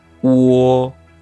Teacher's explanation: So basically it's two sounds, oo and wo. You just blend them together.